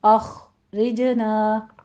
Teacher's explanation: اخرجنا خا کو پر پڑھیں گے، آگے را باریک پڑھتے ہوئے جیم پر کلکلہ کریں گے